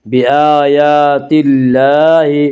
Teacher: اس کا قاعدہ یہ کہ اللہ کے لام سے پہلے زبر پیش ہے تو اللہ کا لام پر پڑا جائے گا، اللہ کے لام سے پہلے زیر آئے تو اللہ کا لام باریک پڑا جائے گا، یا اللہ کے لام سے پہلے تا کے نیچے زیر ہے اس سے اللہ کے لام کو باریک پڑھیں گے